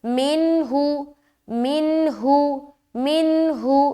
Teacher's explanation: نون کو ظاہر کریں گے کیونکہ نون ساکن کے بعد ہا آ رہا ہے، یہاں پر اظہار کا قاعدہ بن رہا ہے، لہٰذا نون کی آواز کو ظاہر کرنا ہے اور یہاں سے ہم جلدی نکلیں گے۔